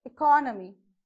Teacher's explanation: So we are stressing more on co here. That's why the vertical bar stress mark is on that.